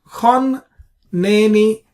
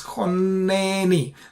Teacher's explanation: we split the nun into two because of the Dagesh. It's called doubling or gemination. So essentially, the Dagesh is nothing but two nuns.